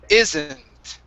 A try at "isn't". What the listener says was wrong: Now you're raising that tongue in the back. You're saying E.